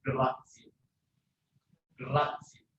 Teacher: When Z is between vowels, although it is written as one, as single, it is still long.